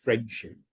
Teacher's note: Okay, now if you're being in a formal environment, you're doing a speech, you might say fully friendship. But if you're just speaking naturally, you tend to drop the D and end up saying friendship. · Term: elision